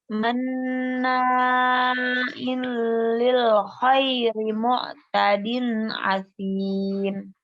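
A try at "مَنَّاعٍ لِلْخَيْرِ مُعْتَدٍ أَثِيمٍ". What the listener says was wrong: Enggak pakai ain, pakai a. Asim. Asim.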